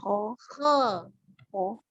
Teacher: Dan penekanan di huruf kh, dia mengangkat pangkal lidah ya, dengan sifat tebalnya.